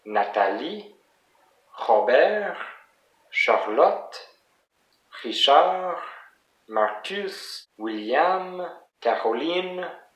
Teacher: notice that it's always the last syllable that is the most stressed